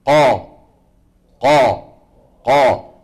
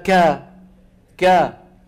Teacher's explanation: فالصوت وين عم يتصعد؟ عند القاف. انتبهنا؟ عند الكاف لا.